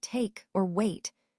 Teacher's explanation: Similarly, in words like take or wait, the slash E small cap I slash diphthong starts with an E and moves toward a glide into an I